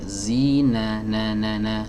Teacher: adanya di ujung lidah, ditempelkan ke gusi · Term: huruf nun